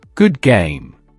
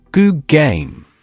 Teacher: Feel how the D becomes a G in anticipation of the following G.